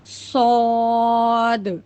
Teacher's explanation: हमें स्वाद को मोटा पढ़ना है। यानी मुंह को गोल करके स्वाद सेम सीन की तरह होगा।